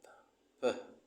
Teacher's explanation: See, as you can see on the screen, labial, it means that the sound of p is produced when our upper lip meets with our lower lip